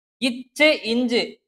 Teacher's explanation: இந்த ரெண்டு மெய்களும் நாவோட இடைப்பகுதியும் நடு அன்னத்தோட இடைப்பகுதியும் பொருந்துறதுனால பிறக்குது